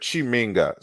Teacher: And even in Kiswahili, they have the Ki version. So Chi is palatalized, is the palatalization of Ki.